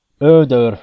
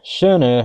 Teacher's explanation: these weird O's are a frontal vowel sound, so we don't really have an approximate